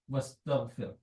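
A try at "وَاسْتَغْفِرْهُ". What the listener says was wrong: But you have to make the ha sound. Wastaghfirh. Wastaghfirh. Because you can't skip letters. If the letter is there, you have to say it.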